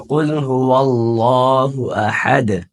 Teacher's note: لفظ اللہ کا جو لام ہے اس کو ہم موٹا پڑھیں گے